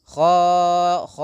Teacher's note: Pada lafal ain jangan sampai dimasukkan ke rongga hidung, tapi tidak masuk rongga hidung, tapi khashi'ah.